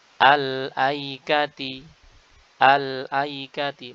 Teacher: maka kita harus baca dengan memunculkan Hamzah wasal yang dibaca dengan a